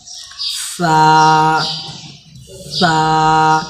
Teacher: دونوں بیچ کے دانتوں سے نکل کے سائڈ سے سا نکلتے ہیں، اس کو ایک دم آرام سے کہنا ہے، زیادہ زور لگائیے گا تو سا کی جگہ سین ہو سکتا ہے، پر ہم اس کو آرام سے سا نکالیں گے۔